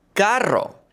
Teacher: The double r is rolled.